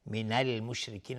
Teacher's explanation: را از مشرکین ترقیق هست، نازک تلفظشون کسره داره